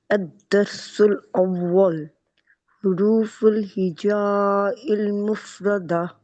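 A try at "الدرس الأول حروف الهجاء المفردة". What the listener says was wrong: इसको लंबा करने की जरूरत नहीं है, इस पे वो जो मुत्तसिल बनाने की जरूरत नहीं. क्यों जरूरत नहीं है? तजवीद हम सिर्फ कुरान पाक पे अप्लाई करते हैं.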